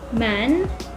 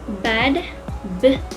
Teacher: The sound B and M is produced with the lips touching each other. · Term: bilabial consonant